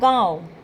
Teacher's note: नाक और मुख दोनों से उच्चारण होता है